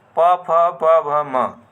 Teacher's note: इकर उच्चारण स्थान ओठ है ओस्ट और इकर उच्चारण करेले ओठ के स्पर्श होवेला जब भी